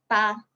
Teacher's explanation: hujung lidah kita ni ditekan. Okey, ditekan ke pangkal gigi depan kita